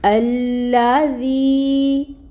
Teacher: لام کے اوپر تشدید ہے، ٹائم ٹیکنگ ہوگا، اور جو فتحہ کی حرکت ہے اس کو 1 کاؤنٹ ادا کریں گے۔ یہاں پر یائے ساکن سے پہلے ذال کے نیچے زیر کی حرکت، تو یہاں پر یائے مد کا رول ہو رہا ہے۔ ہم اس وی کو 2 کاؤنٹس لمبا پڑھیں گے اور اس کو نرمی کے ساتھ بھی ادا کریں گے۔